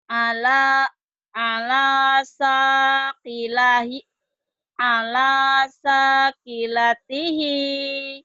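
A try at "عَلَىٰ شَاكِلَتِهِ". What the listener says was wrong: Syennya gedein. Sya. Ala. Syennya masih hutang ya.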